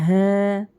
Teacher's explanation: یہ چھوٹی ہاں ہے، حلق کے آخری حصے سے پڑھیں گے